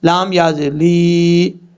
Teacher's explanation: لام کے بعد یا ہے، اس یا کو لمبا کریں گے ایک الف کی مقدار. لام کو یا سے ملائیں گے.